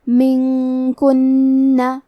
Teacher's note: کلمت منکن میں نون ساکن ہے، پھر حرف الکاف ہے، کاف حروف الاخفاء میں سے ہے تو ہم یہ حکم کو غنہ کے ساتھ ادا کریں گے